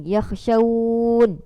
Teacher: kalau berhenti dia akan jadi maklin, yakhshawun, panjang.